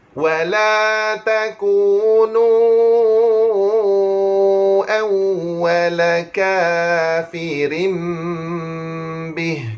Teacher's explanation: tanwin bertemu dengan huruf ba, hukumnya adalah iqlab. Nah, tuan-tuan sekalian, hukumnya adalah iqlab. Mesti kena dengung 2 harakat. Tuan-tuan nak renggang sikit pun boleh, nak tutup mulut terus pun boleh, tapi eloknya kita tutup mulut terus.